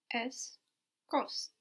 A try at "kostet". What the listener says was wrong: You realize that you put the T in your mind, but you can't hear it in German, no? So you need an extra E to actually hear it. Es kostet.